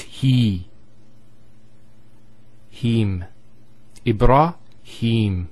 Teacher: so here is the elongation of the e sound